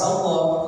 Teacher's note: Lam ini tebalnya ketika lafaz Allah